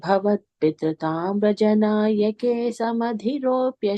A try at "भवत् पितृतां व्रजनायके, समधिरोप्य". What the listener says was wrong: on the second line after Vrajanayake, we have a pause, okay? So you can put a comma after that. Vrajanayake, second line. Bhavat Pitratam Vrajanayake, and then there is a comma there.